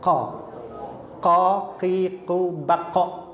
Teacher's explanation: ditekan karena posisi atau makhrajnya kof itu paling pangkal dari lidah kita. Paling pangkal dari lidah kita adalah huruf qaf.